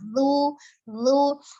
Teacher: makhraj huruf dzalnya ujung lidah ada di ujung gigi seri atas